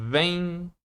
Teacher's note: Repara que eu tenho uma vogal e o som tá, ó, caindo. Ele tá decrescendo de forma nasal, porque o o M ele vai trazer essa parte, Hum.